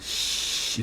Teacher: Mas se você fala só o sh, você só usa a boca. Então é um som não vozeado. Não vozeado é um som que até uma pessoa que é muda consegue fazer, porque não usa as cordas vocais.